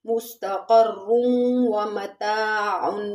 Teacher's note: وَلَكُمْ فِي الْأَرْضِ مُسْتَقَرٌّ، مستقر میں یہاں پر ادغام الغنہ ہو رہا ہے کیونکہ تنوین کے بعد حروف یرملون کی 6 حروفوں میں سے واو ہے تو یہاں پر ادغام الغنہ ہوگا